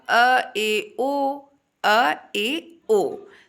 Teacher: अर्ध विवृत की बात करें हाफ ओपन जिसमें आप अपने मुंह को आधा खोलते हो तो उसमें आएगा अ ए ओ अ ए ओ तो चीजों को आप बहुत ध्यान से समझिए कि मुख के आधार पर जो स्वरों का वर्गीकरण है वो कुल चार आधार पे है।